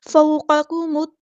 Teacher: मीम को हमने तौ के साथ मिला देना है, हमज़तुल वस्ल हमारा ड्रॉप हो जाएगा, लाम यहाँ पर लाम शम्स है इसको ज़ाहिर नहीं करना। फ़ौक़कुमुत्तूर तौ हमारा हेवी लेटर है पूरा अदा करेंगे और रा को हम साकिन करेंगे वक़्फ़ करते हुए।